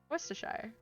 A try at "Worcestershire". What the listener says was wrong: No, you don't pronounce the I, it's Worcestershire. Lancashire. Yorkshire. You don't pronounce the I in the Shire.